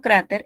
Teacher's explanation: noto que la penúltima sílaba es la tónica, porque yo no digo cráter, yo digo cráter.